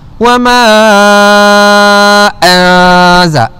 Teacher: nun yang mati berjumpa dengan huruf zai, hukumnya ikhfa hakiki. Cara bacaannya bagaimana? Dengungkan dengan kadar 2 harakat. Dengungkan bacaan dengan 2 harakat.